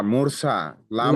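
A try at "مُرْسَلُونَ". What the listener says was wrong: মুরসালু না, এখানে লুটা আপনি বানান টান করেননি, তাই উচ্চারণের টানটা আসছে হ্যাঁ, এখানে কি, এখানে টানটা কেন হচ্ছে বলেন তো? পেশ এসেছে। হ্যাঁ, ও মাদ্দা হবে, ও মাদ্দাকে একালি পরিমাণ টান দিয়ে পড়তে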